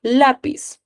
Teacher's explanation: ¿dónde está el acento? En la penúltima sílaba.